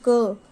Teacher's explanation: जैसे हम क अकेला नहीं बोल सकते, क के साथ अ भी निकलेगा, क। तो ये देखो, क प्लस अ, तब पूरा क बनेगा।